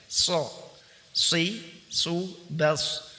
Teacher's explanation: huruf shad keluar dengan meletakkan ujung lidah depan, ya, ujung lidah paling depan pada dinding dua gigi seri bagian bawah sehingga suara keluar di antara gigi seri atas dan gigi seri bawah.